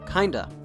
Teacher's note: in american english the of sound often contracts to just an uh sound